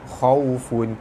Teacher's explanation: bertemu waw di tengah kalimah, hukumnya madlin, dibaca lembut panjang dua harakat. Fun tanwin bertemu ain, hukumnya izhar halki, dibaca terang jelas tanpa dengung.